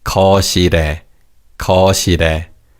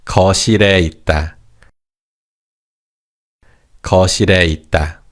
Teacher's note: Now, to say be in the living room, we can say 거실에 있다, 거실에 있다. Notice how the 리을 in the second syllable carries over to the third syllable. It's 거실에, 거실에.